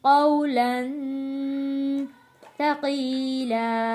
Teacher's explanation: واو ساکن سے پہلے زبر ہے تو ہم نے یہاں پہ جلدی اور نرمی کے ساتھ اس کو ادا کرنا ہے